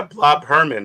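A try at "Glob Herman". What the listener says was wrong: No, Glob. Glob. The G. Glob.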